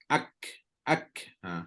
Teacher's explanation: Kaf dengan ta ni dia duduk hams yang paling lemah maka ada angin Bukan tak ada cuma angin dia tidaklah sekuat macam huruf syin